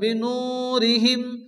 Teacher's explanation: নু ওয়া মাদ্দা এক টেনে পড়তে হবে